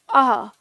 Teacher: और ये है अह, पूरी तरह अह नहीं, ह है नहीं पूरा उच्चारण, बहुत हल्का सा टच होता अह। और ये चीज आप इनका सही सटीक उच्चारण आप किसी शब्द में ही कर पाते हैं।